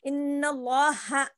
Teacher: ٹھیک ہے، اب آگے دیکھیے سمع اللہ، یہ تینوں میں کیا بتا دیا کہ جو ہے لفظ اللہ کے لام سے پہلے زبر ہو تو لفظ اللہ کے لام کو پر پڑھیں گے، یعنی کہ موٹا پڑھیں گے